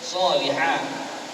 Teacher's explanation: yang solihah itu ha, tempat di tengah-tengah kerongkong kita